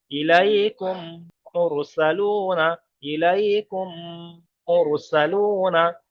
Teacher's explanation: সাকিনওয়ালা অক্ষরটাকে বাদ দিয়ে ডাইরেক্ট তাসদিদওয়ালা অক্ষরের সাথে মিলিয়ে পড়তে হবে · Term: ঈদগামের কায়দা